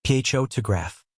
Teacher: the word photograph is stressed on the first syllable